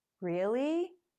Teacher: to sound surprised you often make the rising tone longer